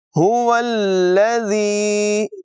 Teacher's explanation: زال میں بغیر سیٹی کی ادائیگی ہوگی